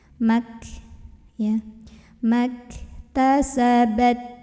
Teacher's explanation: jangan lupa untuk mengeluarkan anginnya karena punya sifat hamas